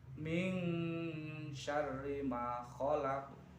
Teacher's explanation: Kata-kata min itu ada nun mati bertemu huruf shin, maka dibaca ikhfa. Kemudian khalaq itu juga bacaannya adalah qalqalah kubro.